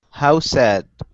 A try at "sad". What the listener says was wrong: Good, good. Much better.